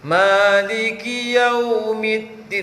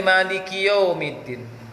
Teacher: waw sukun sebelumnya fathah, maka dia monyong bibirnya. Maliki yaumiddin, monyong bibir.